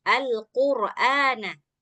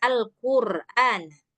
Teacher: Nah, jadi qafnya harus dibuat isti'ala. Nah, jadi jangan dibuat tipis ya.